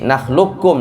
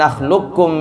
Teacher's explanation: bacaannya semua idgham kamil. Ya, nakhlukum, nggak ada qaf lagi. Jadi nakhlukum langsung ya.